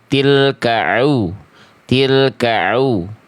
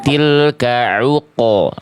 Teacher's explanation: ain makhrajnya dari tengah tenggorokan, tekan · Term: huruf ain